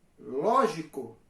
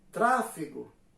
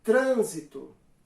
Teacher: a antepenúltima sílaba é a tônica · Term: proparoxítona